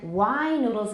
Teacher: Wide noodles, it's longer because duh is voiced. And then wine noodles is even longer than wide noodles because it's an open syllable.